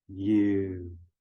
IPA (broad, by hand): jʉu